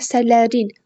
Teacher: Əsərlərin sözündə əsərlərin sonuncu hecaya düşür. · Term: vurğu